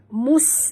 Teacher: Sihrum sini ha pedas dan rum kita kena dengung, sahabat, idgham ma'al gunah, tutup mulut, dengung dua harakat. Mus bunyikan safir, pada huruf sin yang mati